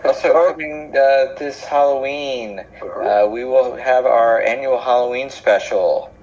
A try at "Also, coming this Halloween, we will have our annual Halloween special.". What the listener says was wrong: you should say that again, but with a little more enthusiasm and not the way you just did it.